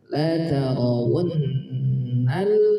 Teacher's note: Waw, maka dibaca la tarawu, dua bibirnya dikumpulkan wu, la tarawun. Dengungkan dua harakat, ada nun bertasydid, gunnah, dengungkan dua harakat gunnah.